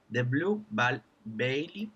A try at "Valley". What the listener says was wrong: Valley. It's not B, it's V. V. Valley.